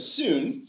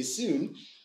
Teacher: the first half of that vowel is quite fronted. Sort of in the second half of the vowel, you can look and see that, okay, it's moving towards the back of the target, right?